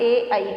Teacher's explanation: कौन कौन सा, कंठ और तालु। ए आई का उच्चारण दो से होता है, एक इस कंठ और एक इस तालु, इन दोनों के एक साथ प्रयोग होता है ए और आई के उच्चारण में।